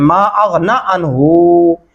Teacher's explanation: ये नून को लंबा नहीं करते और इस हा को लंबा कर देते हैं। ये बहुत बड़ी मिस्टेक पाई जाती है।